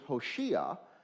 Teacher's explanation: And what happens in the Greek is they chose to transliterate the word for save us, which in Hebrew is Hoshea, and in Greek it comes out as Hosanna, because they don't really have a sh sound in Greek. So they were transliterating Hoshea as best they could, and it came out as Hosanna in Greek.